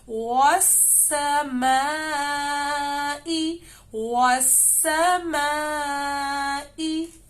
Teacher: میم کے اوپر مد آ رہے ہیں ہم نے مد کو بہت زیادہ لمبا کرنا ہے